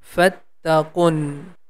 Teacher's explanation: The Q sound is going to connect here with Noon because it has a Shadda sign on the top.